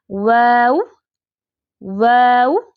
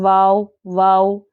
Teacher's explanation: कैसी होगी बारीक आवाज होगी खुली हुई आवाज होती है इसकी वाव की अदायगी में दांतों का कोई काम नहीं दांत नहीं लगने चाहिए